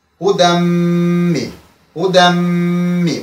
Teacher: Huden, bakın burada huden yukarıda izah etmiştim. Tenvin özünden sonra birleştiği zaman ya harfi orada okunmur, birbaşa mim harfine birleşir.